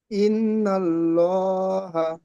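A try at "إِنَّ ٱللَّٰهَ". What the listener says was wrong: মাশাআল্লাহ, খুব সুন্দর পড়লেন, বানান করেন।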